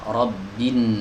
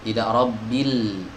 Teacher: lamnya tidak dibaca, digugurkan dalam pelafalan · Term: idgham syamsi